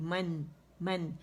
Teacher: میم پہ زبر ہے اور جبڑا کھلے گا اندر سے 1 کاؤنٹ کے لیے، منہ کھلے گا